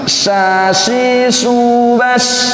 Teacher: Tak masalah gigi, tengah-tengah lidah nih ya. Sya tak ada berkaitan dengan gigi ini, tengah-tengah lidah saja dia ya.